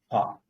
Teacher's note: Pa will be pronounced without touching the lips. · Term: Upadmaniya ucharanam